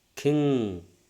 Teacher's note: the back of the tongue is raised towards the soft palate